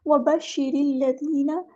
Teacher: یہاں پہ شین مشدد ہے تو اس کو 2 بار ادا کریں گے، ایک بار ساکن کر کے ایک بار اس کی حرکت کے مطابق ، وبشر را، یہاں پہ ہم باریک پڑھیں گے، را کو